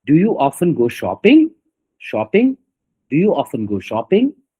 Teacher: In shopping it's rising.